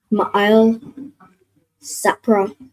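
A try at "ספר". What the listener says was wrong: So not Sapra, but that last part. So Sa and then the Pa and Ra are joined. So what sound would that make with the Pa and the Ra joined? Sapar. So Ma'il Sapar.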